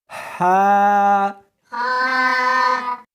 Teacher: اس کو حلق میں سے نکالنا ہے اور ساتھ میں ہوا بھی ہونی چاہیے۔ ہا، ہا نہیں پڑھنی بلکہ اس کو حلق میں سے نکالنا ہے، سینے میں سے نہیں نکالنا۔